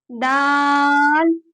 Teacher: دال دال بھی تا کی طرح ادا ہوگا، اوپر کے دو دانتوں کے پیچھے زبان لگائیں، دال، اور اس کو بھی 5 الف کھینچیں گے۔